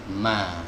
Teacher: huruf mim or Meme keluar dari dua bibir bibir atas ditempelkan dengan bibir bawah mah sama seperti huruf M di dalam bahasa Indonesia ini juga